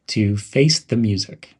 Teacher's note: link the words face and the and pronounce them as face thee and emphasize the word music